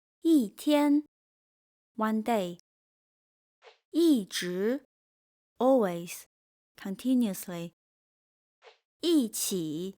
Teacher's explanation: When 一 comes before a non-falling word, it sounds falling.